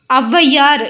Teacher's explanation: தன்னுடைய இரண்டு மாத்திரையிலிருந்து அரை மாத்திரை குறைந்து ஒன்றை மாத்திரையா ஒலிக்கக்கூடியது இது வந்து இடையிலயும் இறுதியிலயும் வராது ஃபர்ஸ்ட் லெட்டர்ல மட்டும்தான் வரும் அவ் அப்படிங்கறது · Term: அவகார குறுக்கம்